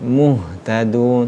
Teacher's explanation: Ketika huruf ha itu sukun, muhtadun, maka ha itu ketika sukun berjalan hurufnya, muhtadun, tidak boleh syiddah, tidak boleh terhenti. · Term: rohawa